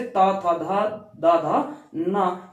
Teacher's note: ये दंत से दांत की मदद से बोले जाते हैं, दांतों की सहायता से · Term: दंत स्पर्श व्यंजन